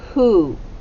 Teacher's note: now this word you don't hear the w at all but you hear what sound yeah you hear the h you hear the h and then you don't hear long o